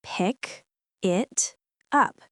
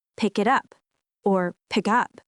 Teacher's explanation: The words flow together. The K in pick connects with it. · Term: link them together